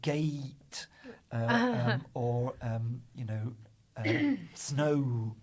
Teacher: They really hit that second part of the diphthong.